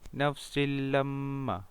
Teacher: Dibaca dengan jelas tanpa dengung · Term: idgham bila gunnah